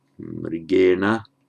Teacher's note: the r causes the following n to be made retroflex